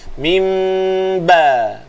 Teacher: Mim tutup mulut. Tutup mulut, bibir rapat secara sentuhan. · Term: iqlab